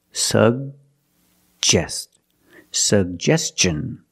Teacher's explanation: have two G's and we're going to pronounce both of them the first G is a hard G sound sug and the second G is the J sound like juice and jump